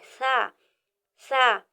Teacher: जब जबान की नोक ऊपर के दांतों के किनारे को टच हो तो नरम आवाज में सा अदा होता है